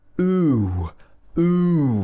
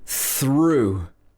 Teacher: this OUGH can also be pronounced ooh. Ooh, making your mouth nice and round like that. Ooh, like in through.